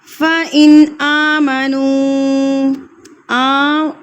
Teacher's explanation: فَإِنْ آمَنُوا کے اوپر کھڑی زبر ہے تو اس لیے ہم اس کو ایک حرکت کے برابر کھینچ کے پڑھیں گے. نون کو میں نے کھینچا ہے کیونکہ واؤ ساکن سے پہلے اگر پیش آ جائے تو یہ واؤ مدہ کہلاتا ہے.